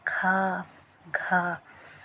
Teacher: इसमें महाप्राण निकलता है ना थोड़ा सा टाइम लगता है